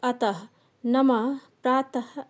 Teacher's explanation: विसर्ग का उच्चारण ह ध्वनि के समान होता है,